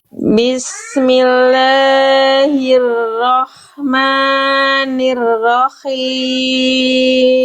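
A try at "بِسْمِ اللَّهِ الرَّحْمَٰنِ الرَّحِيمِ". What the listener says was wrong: Hati-hati la dan maknya jangan kepanjangan. Cukup 2 harokat aja Bunda. Bismillahirrahmani. Tadi Bunda la dan maknya Bismillahirrahmani. Itu maknya dan la-nya khususnya maknya itu masih kepanjangan. Cukup la dan maknya itu 2 harokat.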